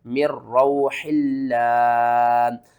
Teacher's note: آگے دیکھیں نون ساکن کے بعد آگے حروف یرملون میں سے را آ رہا ہے، تو یہاں پر ہم نے کیا کرنا ہے، ادغام کرنا ہے لیکن غننے کے بغیر۔ میم را زیر مر، را واو زبر رو، مر رو، حا لام زیر حل، لام کھڑا زبر لام، مر روح اللہ۔